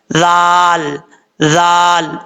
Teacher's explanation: जुबान का सीधा ऊपर वाले दांतों के अंदरूनी किनारे से लगे तो जाल पढ़ा जाता है, बगैर सीटी के साथ पढ़ा जाएगा।